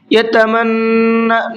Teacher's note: نون کے اوپر تشدید ہے، غنہ کریں گے۔